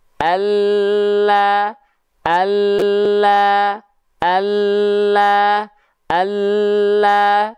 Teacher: seluruh samping lidahnya tapi samping lidah depan yang kanan perhatikan baik-baik samping lidah depan yang kanan dan samping lidah depan yang kiri keduanya nih menyusur sampai ke ujung lidah diangkat dan disentuhkan ke langit-langit · huruf lam itu dilafalkan wah dia keluar dari samping lidah kita ya ini samping lidah tapi bukan seluruh samping lidahnya tapi samping